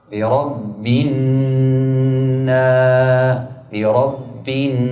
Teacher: gunah dua harakat yang keluar suaranya dari rongga hidung